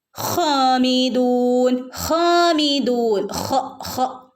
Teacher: തൊണ്ടയുടെ മുകൾ ഭാഗത്തുനിന്ന് വരുന്ന ലെറ്ററാണ് ഹ ഹനെ രണ്ടനക്ക് നീട്ടുകയും കൂടെ വേണം ട്ടോ ഹാമിദൂൻ ഹാമിദൂൻ നീട്ടി ഓതി നിർത്തുക